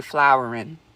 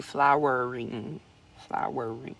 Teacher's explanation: I don't always know how to say that word because I'm from New Orleans and we don't want to make a R sound at the end of a word